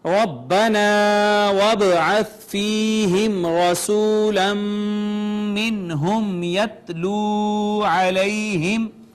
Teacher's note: را مفتوح ہے لہٰذا مفخم پڑھی جائے گی · با ساکن حروف کلکلہ میں سے لہٰذا اس پہ کلکلہ ہوگا